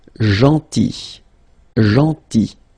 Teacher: Then, gentil. So remember this final L is not pronounced